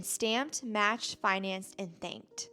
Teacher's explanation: And this is when the base word ends in an unvoiced consonant. And remember, unvoiced sounds don't make your vocal cords vibrate. That's why the unvoiced pronunciation of T is used in stamped, matched, financed, and thanked.